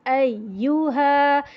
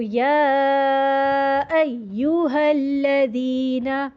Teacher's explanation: نبر کیا ہوتا ہے کہ آواز تھوڑی سی ریز ہوتی ہے، والیوم ریز ہوتا ہے، اور اس کی وجہ سے تشدید واضح ہو جاتی ہے